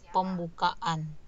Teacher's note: ada glottal stop ya, karena kata dasarnya berakhiran a. Jadi seperti ada stop sebentar, ada jeda sebentar di antara a dengan a, di antara a kata dasar dengan a sufiksnya an.